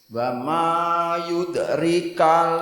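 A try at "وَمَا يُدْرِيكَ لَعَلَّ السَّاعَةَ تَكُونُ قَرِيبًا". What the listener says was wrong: Ri-nya panjang, rika gitu.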